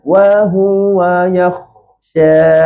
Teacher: Angin kha ni betul, dia kena mengalir. Tapi angin kha ni sebenarnya dia tak perlu sampai macam bunyi berdengkur. Tak perlu sampai yakhsha.